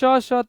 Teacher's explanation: પછી સંઘર્ષી અથવા તો ઉષ્માક્ષર છે કે જે વ્યંજનોના ઉચ્ચારણ સમયે ઉચ્છવાસ મારફતે હવા બહાર આવતી વખતે સંઘર્ષ વિના બહાર આવી શકતી નથી · શ તાલવ્ય સંઘર્ષી ગણી લ્યો